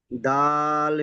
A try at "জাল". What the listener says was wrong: হলো না, দেখেন এটা দাল নয়, এটা হলো জাল। জাল